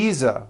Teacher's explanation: I should have said V Visa with a voiced V